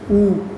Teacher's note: एक तो आपका होता है ऊ, होठ हो गए गोल। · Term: वृत्तमुखी